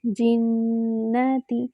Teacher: جنتی، جیم کے نیچے کسرہ ہے، کسرہ کو باریک کریں گے اور جیم جو ہے وہ وسط اللسان سے ادا ہوتا ہے یعنی زبان کے درمیانی حصے سے